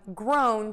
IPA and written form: groʊn (GROWN)